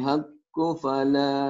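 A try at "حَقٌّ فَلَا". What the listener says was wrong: haqqun. Kalau disambungin jadi haqqun, jadi tanwin kan ikhfa kan? Haqqun ikhfa ke sini. Haqqun ikhfanya juga bunyi M ya. Haqqun fala.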